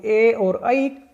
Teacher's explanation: ए और ऐ वर्ण कंठ और तालु दोनों स्थानों से मिलकर बोले जाते हैं, अतः ये कंठ तालव्य वर्ण कहलाते हैं।